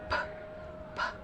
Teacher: Konsonan P masuk ke dalam bilabial, stop atau plosive, serta voiceless.